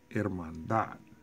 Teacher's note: So the stress or the loudest sound is on the last syllable. We'll say hermandad and go up.